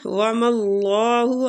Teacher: اللہ کے لام کو ادھر پور پڑھیں گے